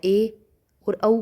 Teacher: ए और औ को बोलते हैं तो हमारा मुंह आधा बंद रहता है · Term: अर्ध संवृत